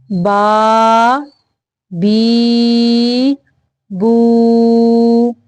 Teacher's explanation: کھڑی زبر کھڑی زیر الٹا پیش کی لمبائی ہے 2 حرکات عربیہ، یعنی 1 الف کے برابر اس کو لمبا کرنا ہے، یعنی 2 سیکنڈ تک۔